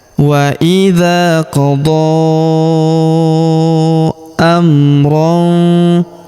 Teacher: Huruf D kita panjangkan empat atau lima harakat karena di atasnya terdapat tanda garis bacaan panjang empat atau lima harakat yang ini ya.